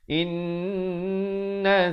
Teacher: Di sini nun mati bertemu nun, dengungkan 2 harakat.